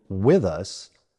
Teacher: In WITH US many Americans use the voice TH